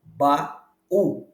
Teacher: na palavra baú ba u estamos diante de um iato